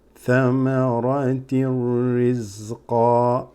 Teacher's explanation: Ra with the shadda here means you're joining the bottom kasratain straight into the ra